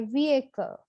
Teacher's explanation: vehicle it's not vehicle the edge is silent we say vehicle so the stress is on the first syllable